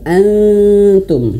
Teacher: ketika nun mati bertemu huruf ta. Jangan antum tapi lidahnya direnggangkan.